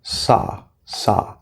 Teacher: do not round your lips you see a w but there's no W do not round your lips